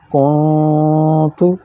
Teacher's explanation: یہاں پھر دیکھیں نون ساکن کے بعد تا آ گئی ہے تو یہاں بھی اخفا ہو گیا، نون کی آواز ناک سے نکلے گی اور کچھ منہ سے، اس طرح آواز موٹی ہو جائے گی، کونت، زبان لٹکی رہے گی اور تالو کی جانب مائل ہوگی، کونت۔